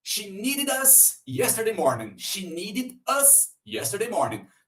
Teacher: Need termina com D de dado. Nesse caso, nós vimos que, acrescentando ed, vai ter som de id.